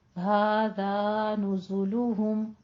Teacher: हादा नुज़ुलुहुम, नून के ऊपर जम्मा है, जाय के ऊपर जम्मा है, लाम के ऊपर जम्मा है, हा के ऊपर जम्मा है, तो आप होंठों को गोल ही रखिए